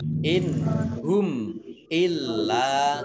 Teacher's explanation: mim sukun bertemu dengan huruf alif juga bacaan idhar syafawi dibaca jelas. Lamnya ada tasdidnya dibaca double.